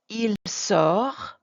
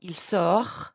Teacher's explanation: But you can hear a difference between the singular, il sort, we're not pronouncing the final T